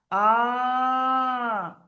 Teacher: আওয়াজটাকে টেনে বলছে, একালিফ পরিমাণ টেনে পড়া। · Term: একালিফ টান